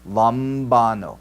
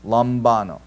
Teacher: mu is our bilabial nasal, right? Both lips, right? And then when I say it, I push the breath up into the nasal cavity